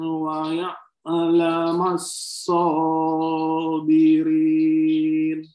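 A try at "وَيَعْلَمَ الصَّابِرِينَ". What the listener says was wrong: Bunyi ainnya perjelas, Pak. Wa ya'lamassabirin.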